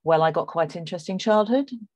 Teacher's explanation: the speak says well I got quite interesting childhood and there's a rising tone there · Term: up talk